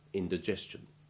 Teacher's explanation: sound which is the same as j as in religious and t when preceded by s can have the sound of soft ch